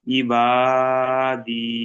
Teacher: ইয়া মাদ্দাকে একালিফ পরিমাণ টান দিয়ে পড়তে হবে